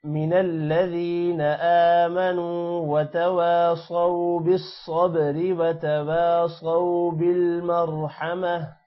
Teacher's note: صاد موٹا ہوگا اور واو کی وجہ سے جب صاد واو کے ساتھ ملے گا تھوڑا سا لمبا کریں گے